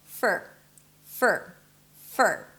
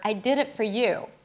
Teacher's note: So it's an F, a schwa sound, and an R. There is no O in the middle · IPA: fər